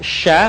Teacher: dengan langit-langit Hai diucapkan mengalir udaranya dan mengalir pula nafasnya bahkan ketika melafalkannya menyebar nafas dan udaranya yang sebut dengan tafasyi perhatikan nafasnya menyebar syaa beda